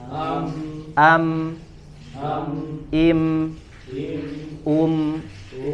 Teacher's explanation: Tapi kalau di sini, ya, huruf mim di sini yang sukun, ya, maka maksud gunnahnya adalah gunnah yang tidak ditahan, ya, tidak dilamakan. Misalkan coba im, ya, jadi tidak ditambah gunnahnya. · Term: gunnah asliyah